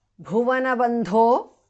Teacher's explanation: Bhuvana bha and bandho dha are mahapranah.